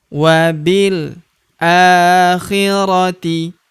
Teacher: huruf bi langsung lompat masuk ke huruf lam yang berharakat sukun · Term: hamzah washol